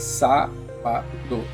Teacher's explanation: Qual que é a sílaba tônica mais forte? É o sá.